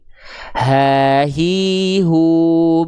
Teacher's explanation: Jadi cukup dilafalkan, nekannya di tenggorokan paling bawah. · H besar itu punya sifat namanya hams, mengalir nafas. Tapi bukan hanya sekedar mengalir nafas, harus diiringi dengan mengalir suara